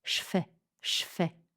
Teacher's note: le je devient che au contact du f